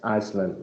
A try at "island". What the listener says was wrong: so no, it's not Iceland. The S, you do not pronounce the S. So it's island.